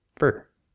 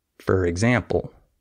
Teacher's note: the word F-O-R is usually not stressed in English. So we don't pronounce that as for. We say fur, right? I say for example. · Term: reduced